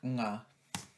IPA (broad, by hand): ŋ